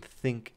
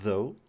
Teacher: Think is voiceless. It doesn't have any vibrations in your throat. But though is voiced. It has some vibrations in your vocal folds.